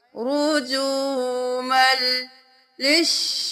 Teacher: रुजुमल, रुजुमल, रुजुमल, मीम दो जबरना मल, रुजुमन लिश नहीं करना, मीम को लाम के साथ मिला देंगे तो लाम की आवाज आए, मन की आवाज ना आए । रुजुमल लिश्शयातीनी, लाम से शीन लिश, शीन जबर शा, लिश्शा,